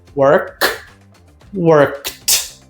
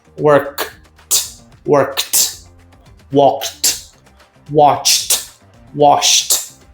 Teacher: o D assume um som de T. Então, ó, work, worked.